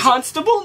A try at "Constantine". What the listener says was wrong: You're putting the emphasis on the wrong part.